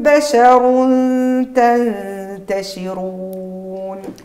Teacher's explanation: صوتها بشر تنتشرون عندي الراء هنا مفخمه لانها متحركه بالضم ثم تنوين الضم بعده التاء عندي الاخفاء مع ابراز الغنه ثم نون ساكنه كذلك بعدها التاء اخفاء مع ابراز الغنه ثم